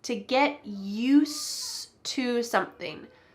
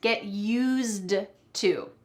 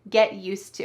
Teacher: I said use, but there's actually a D at the end of that word. Get used to. But we don't say the D